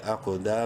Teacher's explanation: قوف کو منہ بھر کے پڑھتے ہوئے قلقلہ کریں گے، حروف قلقلہ میں سے ہے، قوف اور ساکن ہے اس لیے۔